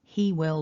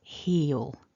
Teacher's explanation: We lose the w and we lose the I, and we keep everything else simple. So he will becomes he'll.